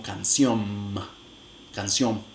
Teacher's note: Las nasales finales se realizan como nasales bilabiales.